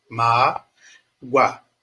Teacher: o o tem som de u e esse U é uma semivogal tá ele tem som de u semivogal então é um U